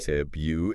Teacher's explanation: You got to get that first R in there. Okay. I think what happens is it's like our mouths are like we want to smooth it over.